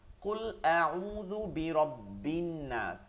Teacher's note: শামসিয়া হরফ হওয়ার কারণে লামের উচ্চারণটা সে বাদ দিয়ে দিছে সে নিজে উচ্চারণটা নিয়ে নিছে আবার আউজুবিল এখানে রব্বিল লামকে পড়ছি